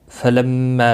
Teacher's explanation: میم مشدد پر گنہ ہوگا، ایک الف کی مقدار کے برابر کھینچ کر بھی پڑھیں گے